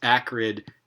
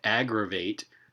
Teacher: This is a voiceless stop and a voice stop that appear in identical contexts, following an a vowel and preceding a r sound. I forgot to use the upside down r in this transcription, but that's what it is, showing us that the voicing feature is contrastive in that context.